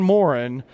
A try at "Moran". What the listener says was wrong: It's actually pronounced Moran, not Morin. You said Morin.